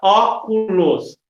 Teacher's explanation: a sílaba tônica é a antepenúltima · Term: proparoxítonas